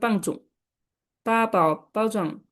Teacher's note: এই সবগুলো first tone, flat tone.